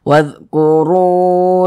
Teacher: Ini huruf waw nih, sebelumnya nih ada huruf yang memiliki harokat dhammah. Maka ru dibaca panjang. Mad tabi'i panjangnya 2 harokat.